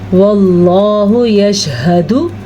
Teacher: کیونکہ اللہ کے نام سے پہلے زبر ہے، جب بھی اللہ کے نام سے پہلے زبر ہو تو اللہ کا نام پر پڑھا جاتا ہے